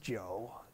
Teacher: it just so happens that it's a perfect homophone for the word for liquor they're both pronounced joe in the third tone